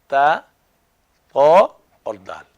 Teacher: زبان کی نوک سامنے والے 2 دانتوں کی جڑ سے لگے